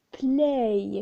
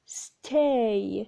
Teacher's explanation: there is a glide or a movement from one vowel to another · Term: diphthong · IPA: /eɪ/